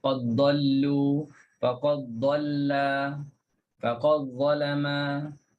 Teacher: Tak perlu lagi kita bunyikan qalqalah. Ah tak perlu letak lagi lidah pada huruf dal. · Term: idgham